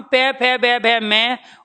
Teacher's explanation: हम होठों के द्वारा ही उच्चारण कर पाते हैं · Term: ओष्ठ